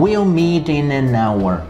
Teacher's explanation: como o H é mudo, então a gente não pronuncia o H